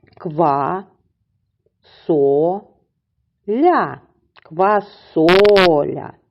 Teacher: наголос падає на другий склад і голосний звук О